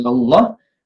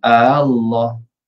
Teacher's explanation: ibdal tu yang panjang 6 harakat